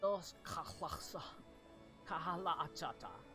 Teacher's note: It does vaguely resemble Common, but it's harsh and guttural. As he seems to form words in the back of his throat